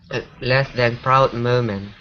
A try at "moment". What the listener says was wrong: Okay, now here instead of moment, it's mo. Okay, don't scoop the vowel as much. Okay, so it's moment.